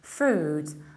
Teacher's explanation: I don't pronounce any E and I prolong the vowel.